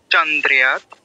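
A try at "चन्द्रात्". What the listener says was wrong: দ্রিয়াত কেন বলছো? এখানে কি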